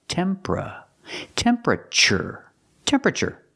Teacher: temperature so again temper use the short uh sound like cup and up